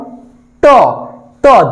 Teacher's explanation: আপনারা একটু চেষ্টা করেন যেমন ট ট জিহ্বার অগ্রভাগ উল্টে যাবে জিহ্বার অগ্রভাগ উল্টে গিয়ে আমাদের মাড়িতে স্পর্শ করবে মাড়িতে স্পর্শ করবে এজন্য এদেরকে মূর্ধাবর্ণ বলা হয় বা পশ্চাৎ দন্তীয়